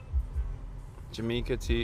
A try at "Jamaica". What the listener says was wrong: Jamaica. You know we don't pronounce the J with a J.